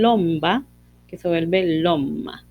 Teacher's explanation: tenemos dos oclusivas bilabiales, una oral y la otra nasal. Entonces están tan cerca que se van a volver el mismo sonido. En este caso el nasal, ¿verdad? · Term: asimilación del grupo MB